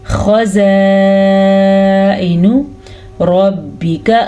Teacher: خزائن خا کو پر پڑھیں گے اور اس مد کی وجہ سے ان کو لمبا کر کے پڑھیں گے.